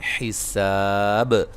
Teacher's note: جب وقف کریں گے با پہ قلقلہ کو واضح کریں گے، حساب، ٹھیک ہے جی، اور مد عارض وقفی کے ساتھ وقف کیا جا سکتا ہے۔